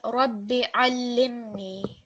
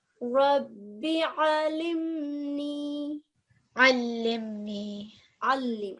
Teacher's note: with the lam mushaddad, if you can just put a bit more stress on there when reciting